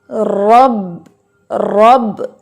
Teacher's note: جب را پر زبر آتی ہے تو آپ اس کو ہیوی پڑھتے ہیں، موٹا پڑھتے ہیں